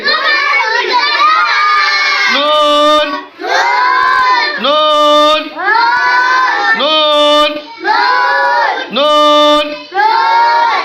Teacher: লাম লাম লাম লাম 9 নম্বর মাখরাজ 9 নম্বর মাখরাজ জিব্বার আগা তার বরাবর উপরের তালুর সঙ্গে লাগিয়ে নুন হরফটি উচ্চারিত হয়।